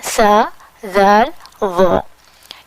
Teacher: ان 3 letters کی ادائیگی اس طرح ہوگی کہ ہم زبان کو باہر نکالیں گے، منہ کے باہر نکالیں گے، اوپر والے 2 دانتوں کے کناروں کو ٹچ کریں گے اور اس طرح ٹچ کریں گے کہ زبان کی نوک باہر سامنے والے کو نظر آتی رہے گی۔